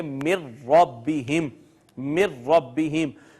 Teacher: نون اور را دونوں قریب المخرج ہیں، دونوں قریب قریب سے ادا ہوتے ہیں، دو اکٹھے قریب المخرج حروف آئے، پہلا ساکن ہے دوسرا متحرک ہے، تو پہلے کو دوسرے میں ضم کر دیا، اور اس کو پڑھیں گے من ربہم، من ربہم۔ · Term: ادغام متقاربین